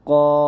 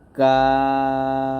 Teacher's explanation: ওকে আমার সাথে কফ এরকম ভাবে তারপর কাফটা পাতলা হবে কাফ কফটা মোটা করে কফ আর কাফটা নরমাল ভাবে কাফ